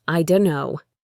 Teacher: For example, in the phrase, "I don't know." In very fast, casual speech, this often becomes, "I dunno." The T from don't is completely gone.